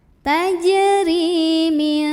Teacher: Ri mad tabi'i karena ada ya sukun sebelumnya kasrah, maka bacanya ri-nya panjang 2 harokat